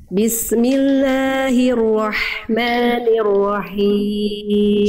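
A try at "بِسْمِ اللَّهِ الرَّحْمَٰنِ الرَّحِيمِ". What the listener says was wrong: Himnya kurang kuat, hak kecil dilafalkan dari tengah tenggorokan, berbisik karakternya. Bismillahirrahmanirrahim.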